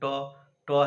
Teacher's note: ट का उच्चारण मूर्धा से होता है, तो इसका मतलब ट ही मूर्धन्य वर्ण है